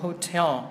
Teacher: Tại vì cái từ này trọng âm nó sẽ rơi âm thứ 2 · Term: trọng âm số 2